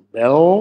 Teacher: Bell, was zum Biao wird, Biao, Also das L wird velarisiert, so bell, und dann eben biau, lässt sich leichter aussprechen, wenn da noch ein A eingeführt wird.